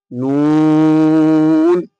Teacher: নুন জিভের আগা এবং তার বরাবর ওপরের তালুর সাথে লাগিয়ে উচ্চারিত হয় নুন